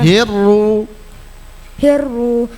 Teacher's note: lam takrif bertemu ro tekan bacanya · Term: idgam samsiah